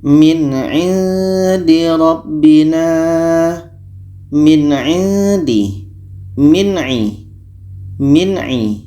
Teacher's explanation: dengan a ini hukumnya izhar halq dibaca jelas apa Yang jelas Nun jelas a jelas dan tidak ada dengung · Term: izhar halki